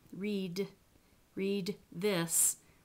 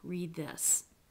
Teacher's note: if we're going to do read this you actually don't release the stop